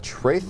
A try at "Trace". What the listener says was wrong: It just sounds like he's got lisp. It's It's trace and symbol. trace and thimble. That's what I've been hearing the whole game. That's what I've been hearing the whole time.